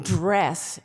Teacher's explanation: the first sound in dress is not dead it's an affricate sound that you pucker your mouth to make